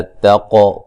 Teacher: قاف کو ہلا کے پڑھیں گے، قلقلہ کریں گے